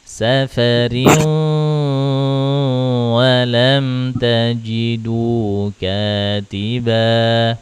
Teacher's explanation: Ayo, idgham bi gunahnya tahannya lebih lama. Wa in kuntum ala safarin sedikit masukkan ke hidung.